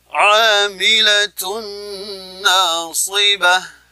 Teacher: ada huruf ain yang makhrajnya adalah wastul halqi, tengah tenggorokan